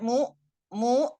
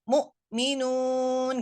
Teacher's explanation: tidak ada penekanan pada makhraj ya tidak ada penekanan pada makhraj makanya huruf hamzah ini tidak memantul bahkan cenderung mengalami takfif